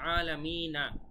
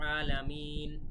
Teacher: আমরা যখন থামবো তখন কিন্তু আলামিন, এই সবসময় শেষের অক্ষর যজম হয়ে যায়।